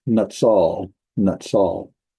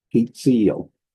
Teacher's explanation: The noon drops out, and it's usually replaced by a Dagesh forte in the next letter. So we have Hitzil.